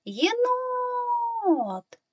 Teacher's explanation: двох складів тепер визначаємо наголос який наголошений склад гукаємо єнот найдовшими тягнемо звук о Він знаходиться в другому складі тому другий склад є наголошеним